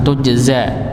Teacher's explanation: ini ada huruf jim yang dia punya sifat qalqalah dipantulkan